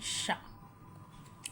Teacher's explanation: और ये सा है जो षटकोण का शा, इसको हम मूर्धन की जगह से बोलते हैं, ऊपर की ओर जैसे बोलते हैं, तो हम इसमें सीटी की मात्रा बिल्कुल कम रखते हैं